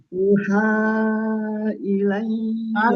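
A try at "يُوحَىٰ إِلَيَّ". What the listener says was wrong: Yuha. Yunya ada matobi'inya dulu. Yuha. Jangan buru-buru.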